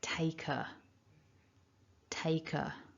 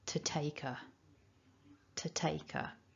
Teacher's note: take ends in a consonant sound and then we've got a vowel immediately afterwards we can connect that so taker taker so running all that through together to take · So thinking about pronunciation features then, we've got the possible weak form of to, which is t, so that would be to take. Because take ends in a consonant sound, and then we've got a vowel immediately afterwards, we can connect that.